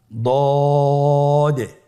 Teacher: জিহ্বার গোড়ার কিনারা সামনের উপরের দুই দাঁতের গোড়ার সঙ্গে লাগিয়ে উচ্চারিত